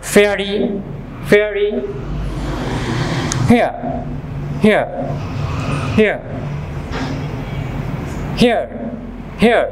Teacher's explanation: এখানে দেখুন এ sound এবং আ, এ এবং আ মিলে হচ্ছে এয়া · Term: ডিপথং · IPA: /eə/